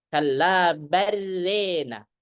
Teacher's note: Selain dia membaca dengan idraj tanpa saktah, maka konsekuensi lain membaca imalah pada rona dibaca rena